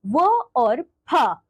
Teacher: जो वर्ण दांत एवं ओष्ठ दोनों की सहायता से बोले जाते हैं, उन्हें दंतोष्ठ्य वर्ण कहा जाता है।